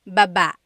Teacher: Emphasis is on the second syllable.